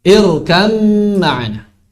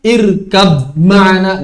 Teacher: Ba-nya sudah tidak tersisa sama sekali. Tidak boleh diucapkan irkab ma'ana. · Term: idghamkan